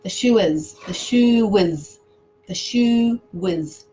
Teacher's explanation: So for example, the shoe is, we've got E as a vowel, I as a vowel. But when we say those two words together, it sounds quite different. It sounds like the shoe is, and it sounds like we're adding a W.